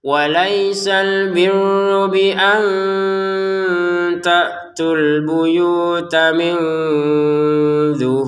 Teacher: Waisal biru ditekan rnya ya karena ada tasdid